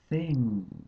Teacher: gently don't bite the tongue please don't bite the tongue but put the tongue very gently between the teeth stick your tongue out and then make some friction